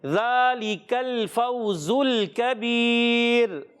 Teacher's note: یہاں بیچ میں زا ہے, اس زا کو سیٹی کے ساتھ ادا کریں گے, اور پھر یہ سیٹی والا حرف, اور یہ ذال بغیر سیٹی والا. ذال میں کبھی بھی سیٹی نہیں ہوتی، اور زا میں سیٹی ہوتی ہے۔